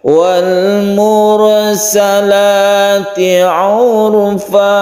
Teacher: walmursalati itu datar urfanya yang agak kita tinggikan Wal mursalati Urfa jadi urfanya yang kita tinggikan tentunya dengan mengedepankan